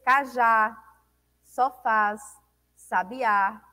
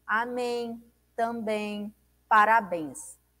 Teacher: Em ou ens, nós temos amém, também, parabéns. Todas essas palavras são palavras oxítonas, onde a sílaba mais forte, dita com maior intensidade, é a última sílaba.